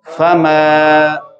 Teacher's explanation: تو فا کو لمبا نہیں کریں گے، میم کو لمبا کریں گے